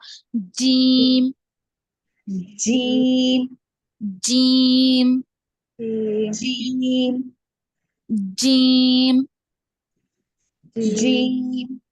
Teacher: वसतु लिसान middle of the tongue ऊपर के तालू को लगने से अदा होता है